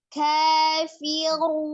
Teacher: tebalkan huruf ro-nya, ro dhamah dibaca tebal ya